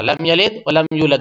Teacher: اس کے بعد لم یلد ولم یولد، یہاں بھی وہی قلقلہ ہوگا، لم یلد ولم یولد دونوں پہ قلقلہ ہوگا